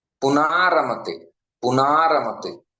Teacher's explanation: पुनः प्लस रमते, पुनारमते, पुनारमते, तो पुनः का विसर्ग चला गया और अ का आ बन गया, पुनारमते हो गया। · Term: विसर्ग लोप